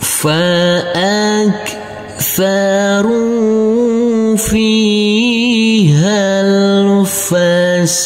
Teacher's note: Untuk huruf ro yang berdhamah ini bertemu dengan huruf waw sukun, maka kita baca panjang dengan panjang 2 harokat. Dan huruf alifnya ini kita anggap tidak ada. · Dan huruf alifnya ini kita anggap tidak ada. Huruf ha langsung masuk ke huruf lam. Huruf alifnya kita anggap tidak ada juga.